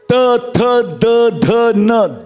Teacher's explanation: जिह्वा दांत से टकराएगी, ये दंत स्वर है